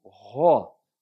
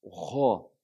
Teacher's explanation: ele não é acentuado, ele é apenas aspirado, mas ele é pronunciado com um som aberto